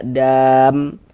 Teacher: Kalau kita berwakaf berhenti di huruf yang tidak dibaca panjang, maka hurufnya kita sukunkan, hurufnya kita matikan sehingganya kita baca dam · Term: disukunkan